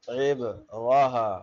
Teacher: تا جو ہے ہاں میں بدل جائے گی وقفا میں